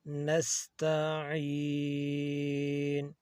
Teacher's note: آئین کی آواز حلق سے آنی چاہیے